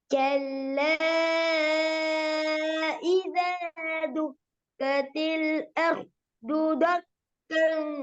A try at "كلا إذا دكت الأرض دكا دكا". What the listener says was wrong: தக்கன் அல்ல தெக்கன். தொக்கா வரக்கூடாது, தான் வரணும்.